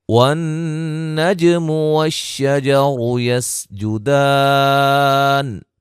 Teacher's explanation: والنجم والشجر يسجدان، را کو موٹا ادا کریں گے، جیم نون پہ نون مشدد کا غنہ ہے، جیم پہ قلقلہ ہے